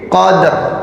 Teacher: Setelah itu langsung ro yang disukun, maka bacanya itu tadi fi lailatil qadr. Jadi qadnya itu dikolkolahkan dulu, kemudian baru ke ro-nya qadr. Jadi kayak mau membaca ro tapi ro-nya disukun, jadi makanya jadinya ya. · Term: qalqalah